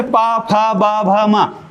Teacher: क्योंकि पा बोलते वक्त होठ मिलेंगे ही, इसलिए इसको ओष्ठ से उच्चारित बोला जाता है।